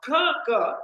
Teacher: the back of the tongue goes and touches the soft palate or the velum. That also is a stricture of complete closure.